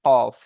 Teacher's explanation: জিভের গড়া এবং তার বরাবর উপরে তালুর সাথে লাগিয়ে উচ্চারণ হয় কফ। জিভের গড়া উপরে তালুর সাথে লাগিয়ে উচ্চারণ হয় কফ।